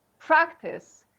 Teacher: If either it is like a noun or a verb, the stress goes on the first syllable.